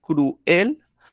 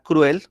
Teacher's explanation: También yo la puedo separar cruel o simplemente decirla cruel como un monosílabo y también sería un diptongo